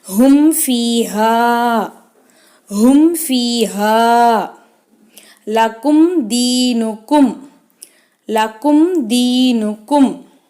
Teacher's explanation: இல்ஹார் ஷஃபவி, இங்கே நம்ம குன்னா செய்யாமல் மீமை வெளிப்படுத்தி உச்சரிக்கணும்